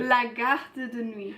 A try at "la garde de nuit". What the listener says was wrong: Alors voilà, ça c'est une erreur qu'on trouve aussi souvent. C'est d'allonger le son vocalique précédent. Donc c'est pas la garde de nuit, c'est la garde de nuit. Il faut prononcer le R, il ne faut pas allonger le son précédent, comme on fait en anglais. C'est pas la garde, c'est la garde.